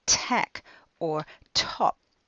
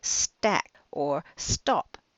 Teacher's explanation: when you put an S in front of those words the aspiration disappears and they use a non aspirated tea